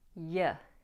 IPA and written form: jə (your)